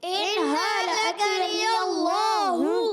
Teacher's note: اللہ پاک کے لام سے پہلے زبر آ رہا ہے، اللہ پاک کا لام موٹا کر کے پڑھیں گے. ہا کی پیش ہے، ہا پر پیش کلیئر ادا کریں گے. · اور ان اہلکنی اللہ، تو یہاں پر جو پیارے بچوں کاف کو باریک رکھنا ہے، نون کے نیچے زیر ہے، کاف کی حرکت، نون کی حرکت کو کھینچنا نہیں ہے. یا کی حرکت کو لام سے ملائیں گے، یا کی زبر کو لام سے ملائیں گے.